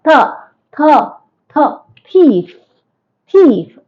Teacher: your tongue touches the alveolar ridge when you pronounce th